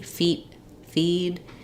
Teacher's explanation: the difference between feet and feed, if I'm not saying the T and D, feet, feed, is that I hold the vowel longer in feed than I do in feet.